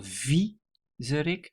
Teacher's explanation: The emphasis is on the first syllable, viezerik.